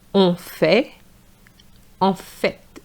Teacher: In fact is en fait, and you need to pronounce the T.